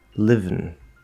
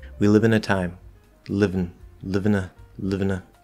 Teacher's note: i'm not moving anything here i go into the v live bring the n up without releasing the v v so that vowel in between just disappears it's gone we live in a time living live in a